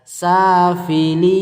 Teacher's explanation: Fi-nya pendek, li-nya yang panjang karena mad arid